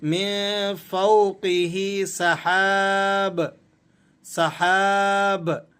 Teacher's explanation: اب آخری بات آپ کو وقف کے حوالے سے سمجھا دیتے ہیں کہ اگر ہم با پر وقف کریں گے تو اس با کی جو دو پیش کی تنوین ہے اسے ہم نے سائلنٹ کر دینا ہے، اور با کو ہم نے قلقلے کے ساتھ ادا کرنا ہے